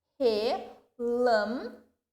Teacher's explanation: eu pronunciei com mais tonicidade o lam. Notem, recebe acento circunflexo.